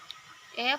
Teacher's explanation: vokal depan sedang atas tak bundar